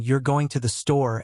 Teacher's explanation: Try saying you're going to the store as a statement with falling intonation.